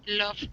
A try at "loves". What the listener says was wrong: He loves to dance. Okay, you want to make sure to pronounce the S at the end. Loves. Loves. So it's a little bit challenging. Okay, so the love, and then you have loves.